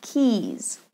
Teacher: keys has a long e in the middle and voiced Z keys where are my keys notice how my mouth is wide